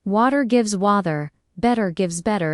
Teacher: T between vowels often sounds like a soft D. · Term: flap T